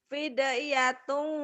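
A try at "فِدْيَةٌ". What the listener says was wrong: oh fidyatun. Fidyatun, jangan jangan lamain. Fidyatun. Ada tapi fidyatun, jangan fidyatun, jangan dipanjangin. Fidyat asal lewat aja.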